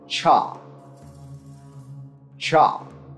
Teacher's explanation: then directing it the blade of the tongue behind the alveolar ridge and the front of the tongue domed at the palate without engaging the vocal cords